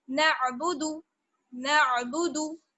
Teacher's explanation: नाबुदू खींचना नहीं है, दाल वाव पेश दू नहीं करना है, बल्कि दाल पेश दू जल्दी से